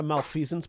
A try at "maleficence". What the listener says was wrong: You pronounce the E in the word Maleficence.